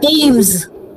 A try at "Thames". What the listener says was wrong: No, there is no long vowel there. It's a short vowel, okay? Thames. Thames. T-E-M-S. Thames. T-E-M-Z. Thames. Not Thames.